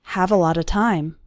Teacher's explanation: All of those little words, a lot of, run together into a lotta